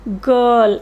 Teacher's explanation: This symbol is particularly used when consonant R comes after any vowel, because in British English R is not always clearly pronounced as in American English